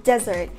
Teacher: desert is pronounced ˈdezərt, the stress is on the first syllable